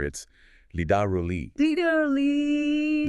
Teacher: It combines a flap T and the American R, which are, two of the hardest sounds.